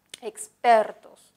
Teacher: Expertos no lleva tilde porque es grave, el acento está en per.